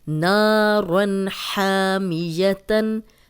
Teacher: نا الف مدہ ہے، 2 حرکات لمبا کریں گے